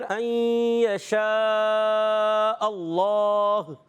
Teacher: اللہ پاک کے لام سے پہلے زبر آ رہا ہے، اللہ پاک کا لام موٹا ہو جائے گا